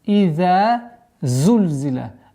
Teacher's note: А за у нас свистящий звук